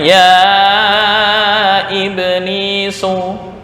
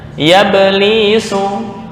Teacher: Ini kan hamzah qata. Hamzah qata bacanya ya iblisu. Nah, tapi misal hamzah wasol bacanya ya belisu.